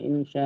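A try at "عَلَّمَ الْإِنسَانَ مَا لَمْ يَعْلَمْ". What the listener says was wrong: ইনসা ইনসা সা, ওটা সিন আলি জবর সা, ইনসা নামা।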